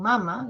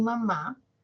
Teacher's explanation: Por ejemplo, en mamá y no en mama, yo no digo mi mamá, no digo ayer festejé con mi mamá, el acento, ¿no? Es decir, la mayor fuerza de voz, recae en la última sílaba, mamá, y recae en la última vocal, o sea, específicamente en la vocal, ¿no?